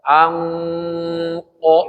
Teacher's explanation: Ikhfa ketika bertemu dengan huruf tafkhim, bunyi nunnya harus ngikutin.